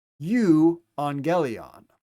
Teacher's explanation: Notice our two gammas together make the nasal sound.